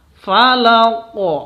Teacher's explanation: karena qaf itu termasuk huruf qalqalah, harus dibaca pantul.